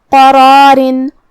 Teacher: مد الف اپنے پیچھے والے حرف کا حکم لیتا ہے تفخیم میں اور ترقیق میں، تو ہم حرف القاف کو اور را کو اور مد الف کو تینوں کو تفخیم سے مطلب بھاری آواز میں ادا کریں گے